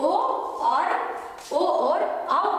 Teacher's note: ओ और औ का उच्चारण स्थान कंठ और ओष्ठ से होता है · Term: कंठोष्ठो